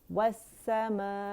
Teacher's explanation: اور ای جو ہے اقص الحلق سے ادا ہوگا کیونکہ یہ حمزہ قطع ہے · السماء اگر اسے ہم پڑھیں السمائی، السمائی، تو مد لیٹر جو ہے یہ ایک کلمہ ہے السماء، تو اس مد لیٹر کے فوراً بعد ہمارے پاس حمزہ آ رہا ہے سیم کلمے میں، ٹھیک ہے. تو یہاں مد متصل واجب بنے گی، 4 to 5 کاؤنٹس کھینچنے سے لازمی ہے